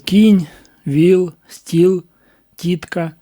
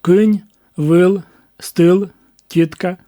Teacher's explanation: особливість північних діалектів це дифтонги